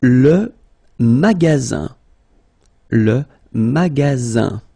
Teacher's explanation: Okay, remember you've got only one S between two vowels. Then you get the sound Z, alright? And then the ending here is IN, so it's nasal, it goes in your nose, and it's un.